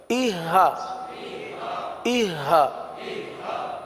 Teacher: اب دیکھیں اہ کی آواز نہ ہے نا، سینہ جس میں انوالوڈ ہو جائے، سینے سے آواز آئے، سینہ نہیں بلکہ گلے کے انتہائی حصہ جو ہے، آخری حصہ، یہاں سے یہ حرف ادا ہوتا ہے